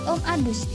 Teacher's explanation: kata G terdengar seperti lafaz D